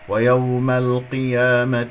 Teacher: القاف مفخمة مرتبة أخيرة، يكون نضم الشفتين